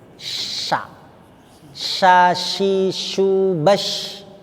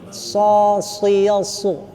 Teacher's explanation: Sya ini ya, kita rasakan ada hembusan angin dia. Sya keluar. Sya. Karena lidah di dalam itu melebar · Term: sha